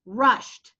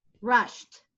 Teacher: the e d makes a t sound so let's listen to it rushed you hear the T sound